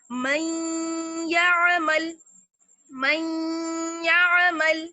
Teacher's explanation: ہلکی ہلکی نون ساکن کی یا پھر تنوین کی آواز آئے گی, تو یہ کہلاتا ہے ادغام بالغنہ.